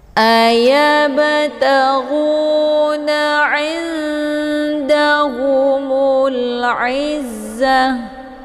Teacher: Mana aqrab itu dekat, makhraj nun dengan huruf dal itu tempat keluarnya saling berdekatan. Cara bacanya, nunnya disamarkan siap-siap menuju huruf dal dengan cara didengung. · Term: ikhfa aqrab